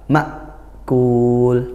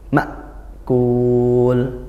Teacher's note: Tapi kalau hamzah jangan ngalir, dihentak makul. Nah, dia tertahan suaranya, tertahan nafasnya. Ndak seperti hampir-hampir seperti sakitah gitu. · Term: hamzah sukun